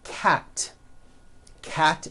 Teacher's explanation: cat ends with an unvoiced T